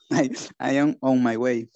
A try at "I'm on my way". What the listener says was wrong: Junta todo, para no decir I am on my way. I'm on my way.